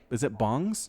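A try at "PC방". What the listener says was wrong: No, it's not like ONG.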